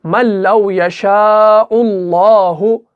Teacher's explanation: यहां पे नून साकिन के बाद लाम मुशद्दद आया, तो यहां पर क्या होगा, इदगाम होगा, लेकिन बगैर गुन्ना के होगा, इदगाम कामिल होगा। नून साकिन के बाद लाम आ रहा है, तो हमें यहां पर गुन्ना नहीं करना है, बल्कि हमें सीधा यहां पे इसको अदा करना है।